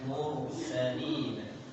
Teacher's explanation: Ada ro sukun sebelumnya dhammah, maka ro-nya juga dibaca tebal.